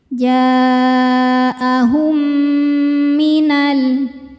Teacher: karena ada dua huruf yang sama makhraj dan sifatnya bertemu. Di mana huruf pertama sukun, huruf kedua berharakat. Masuk dan dengungkan ya.